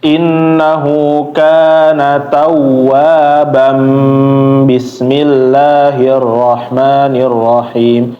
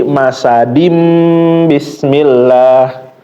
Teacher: Iqlab yaitu tanwinnya berubah jadi huruf mim.